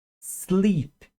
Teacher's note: Começa a vibrar no L, ó. Sleep. Só o som do S no início, tá?